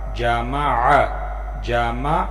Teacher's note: عین حلق سے نکلنے والا حروف عین ہے، اوپر زبر ہے۔